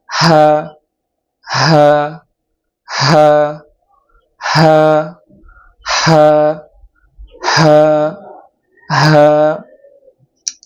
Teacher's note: হাটা উচ্চারণ করতে হবে গলার শুরু জায়গা থেকে, আওয়াজটা ভিতর থেকে আসবে।